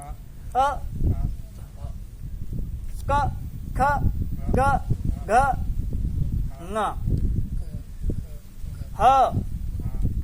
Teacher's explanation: कवर्ग का उच्चारण कहाँ से होता है? कंठ से होता है। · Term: कंठ्याः